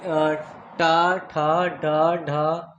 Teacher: मूर्धन्य से बोले जाते हैं